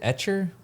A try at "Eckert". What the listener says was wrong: Ecker. No, it's a hard C.